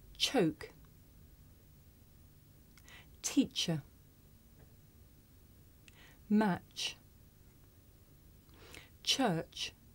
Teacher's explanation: this is a voiceless consonant you can hear it at the beginning of the word choke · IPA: tʃ